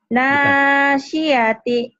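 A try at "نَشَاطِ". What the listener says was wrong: Bukan sin tapi shod. Nasyati.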